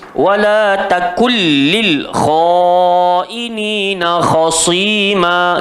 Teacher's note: Nun mati bertemu lam jadi idgham bila gunnah, jangan dengung.